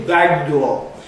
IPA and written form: ˋbæg dɔː (back door)